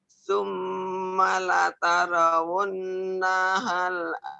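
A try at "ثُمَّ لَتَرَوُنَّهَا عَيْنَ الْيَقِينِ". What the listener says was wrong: Naha. Apa ada nahal? Naha. Jangan ada lamnya tuh. Summa la tarawun naha. Summa la tarawunnaha ainal yaqin.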